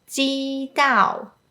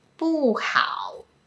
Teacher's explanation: Cantonese speakers tend to open their mouth bigger for the “a” sound, and also pronounce it a little bit longer.